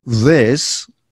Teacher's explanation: is the same position the time between the the teeth but here we have to vibrate the vocal cords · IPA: ð